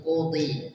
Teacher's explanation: Dhad dalam kondisi kasrah tetap ditebalkan. Tebal, tetap hurufnya tetap tebal walaupun dalam kondisi kasrah.